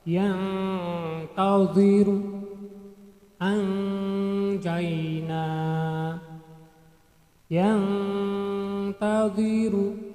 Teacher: jadi Nun matinya itu dibaca samar-samar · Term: ikhfa